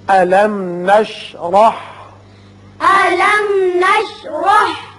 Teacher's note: را کے اوپر زبر ہے، اس کو پر کر کے پڑھیں گے